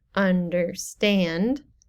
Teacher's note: Anapest is the opposite of that. It's 2 unstressed syllables and then stressed.